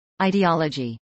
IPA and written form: ˌaɪdiːˈɑːlədʒiː (ideology)